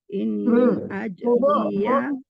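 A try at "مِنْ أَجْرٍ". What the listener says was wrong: Sama Bu Erda tadi ya, ajri itu dimatikan rohnya. Kalau dia harakat fathatain gitu, kasratain gitu, masihnya baru dua di bawah. Kalau kita berwakaf, dimatikan hurufnya. Min ajr. Matikan jim dulu, baru matikan roh. Min ajr.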